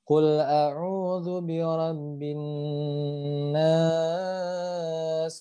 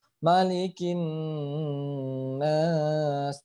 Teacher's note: Yang harus diperhatikan dalam bacanya, ingat nun yang bertasdid harus ditahan sampai seenak mungkin